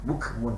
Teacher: Mun tak ada dengung. Izhar khalqi tak ada dengung sini